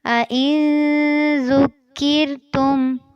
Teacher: زال کو باریک نرمی سے پڑھنا ہے اور کاف کو بھی باریک پڑھنا ہے